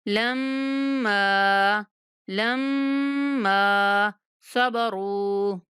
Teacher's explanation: یہاں پہ بھی مشدد میم پر غنہ کرتے ہوئے میم کو ایک سیکنڈ تک لمبا کرنا ہے